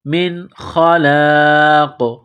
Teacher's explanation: وَلَقَدْ عَلِمُوا لَمَنِ اشْتَرَاهُ مَا لَهُ، میم الف زبر ما، لام زبر لا، ہا الٹا پیش ہو، ما لَهُ فِي الْآخِرَةِ، فِي الْآخِرَةِ، را کے اوپر زبر ہے، را کو موٹا کرنا ہے. من خلاق، نون ساکن کے بعد خا ہے، حروف حلقی ہے تو نون ساکن پر غنہ نہیں کریں گے. من خلاق، یہاں پر جب سٹاپ کریں گے، وقف کریں گے تو قاف کو سائلنٹ کریں گے، قاف جب ساکن ہو جائے گی تو یہاں پر قلقلہ کریں گے.